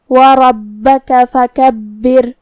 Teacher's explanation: آخری میں ہم را کو پتلی آواز میں پڑھیں گے کیونکہ اس پہ جزم ہے لیکن اس سے پہلے والے حرف کے نیچے زیر ہے